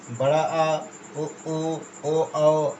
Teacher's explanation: वे स्वर जिनके उच्चारण में जीवा मुख के पश्च भाग में रहती है उन्हें पश्च स्वर कहते हैं।